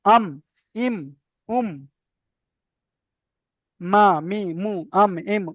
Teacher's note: মিমটা দুটো ঠোঁটের শুষ্ক অংশ থেকে উচ্চারিত।